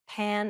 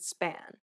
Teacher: Place your hand over your mouth and compare the words pan and span. Note how there is a burst of air in the first P, but none in the second.